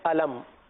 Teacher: علم یہاں پر میم کو ظاہر کر کے پڑھیں گے, یعنی گنہ نہیں کریں گے.